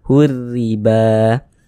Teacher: huruf ro yang memiliki harakat kasrah dibaca tarqik Dibaca Tipis · Huruf ra kalau memiliki harokat kasrah, memiliki tanda baca kasrah, ini baris satu di bawah huruf namanya tanda baca kasrah atau harokat kasrah atau baris kasrah. Maka huruf ra yang memiliki harokat kasrah dibaca tarkik, dibaca tipis.